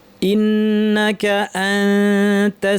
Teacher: তা এর মাখরাজের জিহ্বা নিয়ে যাব কাছাকাছি। উপর পাটি দাঁত এর গোড়ায় জিহ্বা নিয়ে নাক থেকে গুনা করব। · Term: ইফা